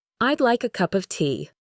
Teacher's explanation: The word a becomes I, and of becomes av. The F in of is actually pronounced like a V. It sounds incredibly different from how it's written, and this is why listening is so challenging at first.